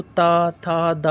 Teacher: आपके दांत से जीभ जो है दांत से टच होगी